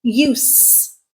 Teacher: when I use the unvoiced counterpart, use, it becomes a noun